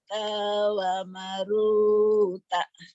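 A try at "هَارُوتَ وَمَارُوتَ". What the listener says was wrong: Wamanya panjang. Haruta wa maruta. Tanya pendek. Haruta wa maruta. Jadi yang panjangnya ha sama maknya. Haruta wa maruta.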